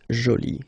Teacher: you can see that you put this e, but then you don't pronounce it